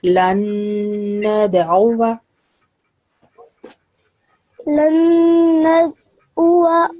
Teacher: So over here, it is ain sound. So it comes from your throat.